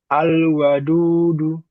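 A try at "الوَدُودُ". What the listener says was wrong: Nah betul yang terakhir alwadudu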